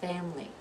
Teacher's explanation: It looks like there's 3 syllables, but we're going to pronounce only 2, family.